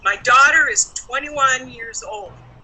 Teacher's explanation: So the first stressed word in that sentence is daughter with a noun. So the pronoun was not stressed, the noun is stressed, the verb was not stressed, the number 21 was stressed, and the last word old was also stressed. That's an adjective.